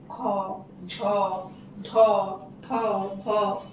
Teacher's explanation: দেখো প্রতিটা বর্ণের সাথে হ যোগ হয়েছে, মানে হ যোগ হয়েছে মানে উচ্চারণ করার সময় মনে হবে যেন হকার যুক্ত নিঃশ্বাস বেরিয়ে আসছে। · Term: মহাপ্রাণ বর্ণ